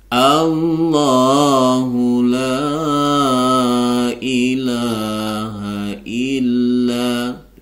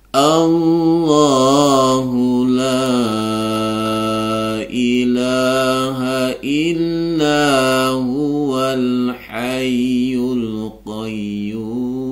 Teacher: karena dia di awal kalimat, maka Allahnya dibaca tebal. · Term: lafzul jalalah tafkhim